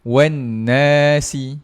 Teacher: Wannasi dengungnya tak cukup. Wannasi dia dengung satu harakat je. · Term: kesalahan yang tersembunyi